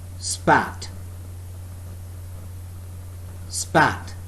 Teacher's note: when I speak the word spat, there is less puff of air, or rather no puff of air